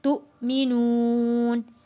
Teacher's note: حمزہ کو ہم جھٹکا دے کے ہم نے پڑھنا ہے